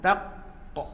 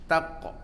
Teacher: Jadi huruf qalqalah itu dia mesti syiddah dulu. Sifat syiddah kan, ada sifat syiddah kan, dia tahan suara dulu. Contoh kita sebut tak, tahan dulu.